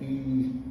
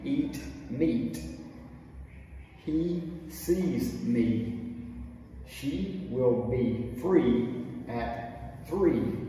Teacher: e by contrast is at the very top of the mouth the mouth is really closed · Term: long e sound